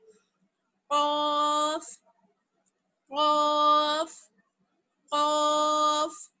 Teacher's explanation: ये भी हुरूफ मुस्तालिया में से है, यानी हमेशा मोटा और ऊंचा पढ़ा जाता है।